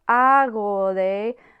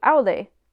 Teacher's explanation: the letter G between vowels is pronounced very slightly, eventually quick pronunciation of agode merged into agode merged into aude.